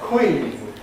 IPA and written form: kwiːn (queen)